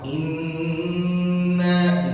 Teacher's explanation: bertas bertasydid ya Nun bertasydid itu dibaca berapa Dua Harat ya Jadi gunah dua harakat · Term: Nun musyaddadah